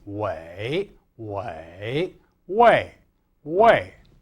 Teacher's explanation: in the third or fourth tones, presumably because the syllable has a slightly longer duration, the E is a little bit more obvious.